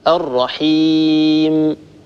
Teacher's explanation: بتر صوتها عند الوقف عليها حتى يصير صوت الميم أشبه ما يكون باء، يكاد يكون حرف الباء.